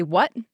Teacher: So what doesn't have a T on the end of it at all. It's just gone, no T. But if I was doing Bronx, it would be what.